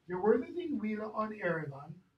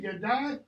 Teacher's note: G-E in Old English is always pronounced yeah. Always. Okay? It has the palatalized G.